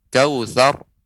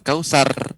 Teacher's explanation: A'tayna kemudian kautsar, ra yang disukunkan, waqaf sebelumnya berharokat fathah, maka ra dibaca tebal.